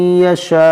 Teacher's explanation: مد متصل، کیونکہ الف مدہ کے بعد حمزہ اسی کلمے میں ہے